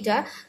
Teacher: আমরা যখন উচ্চারণ করছি ইটা, তখন আমাদের ঠোঁট প্রসারিত হচ্ছে, ছড়িয়ে যাচ্ছে।